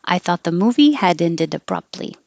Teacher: So I thought the movie had ended, will all connect abruptly. Forget about the T in abruptly.